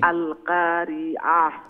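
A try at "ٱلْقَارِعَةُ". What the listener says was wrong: হ্যাঁ আর আল কাজে লেটা কাফ নক্তালা কাফ একটা চিকন করে উচ্চারণ করেন না মোটা করি বড় করি বড় করি বড় কাফ আমরা কই কিন্তু আসলে এটার মানে কি মুঠা মুঠা সাউন্ডটা মুঠা হইতো আল ক একটা হইছে আল কা আর একটা হইছে আল ক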